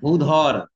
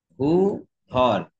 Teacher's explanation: পরপর দুটো মহাপ্রাণ ধ্বনি উচ্চারণ করতে যে কেমন বেগ পেতে হয় বুঝছো